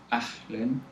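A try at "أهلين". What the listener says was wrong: Yeah, ahlin, even softer the ha. This normal ha.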